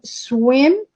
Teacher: The s is labialized because its production anticipates the labial rounded sound.